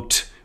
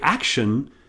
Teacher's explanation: You felt the difference between t and sh, because when you say action, your tongue doesn't touch the top of your mouth. And that's a difference you can feel.